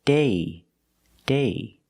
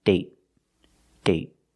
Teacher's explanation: So with date, we see the vowel is shorter because you have a stop T at the end.